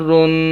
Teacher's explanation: یہ ناک میں جو آواز جا رہی ہے غنے کی ہے